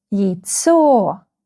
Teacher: The second syllable is stressed.